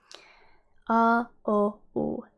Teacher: When you say these vowels, you notice that you say them with your tongue kinda in the back of your mouth. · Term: back vowels